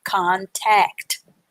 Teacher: so you run the t and the a sound together to get that ta sound